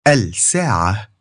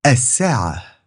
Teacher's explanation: you're going to skip the L sound and double the next consonant. So rather than saying الدب, the bear, you'll say الدب.